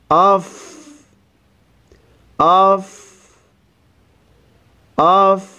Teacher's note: کریں گے قد حمزہ کو جب فا سے ملانا ہے تو فا کی ادائیگی کرتے ہوئے آپ کی آواز اور سانس جاری رہے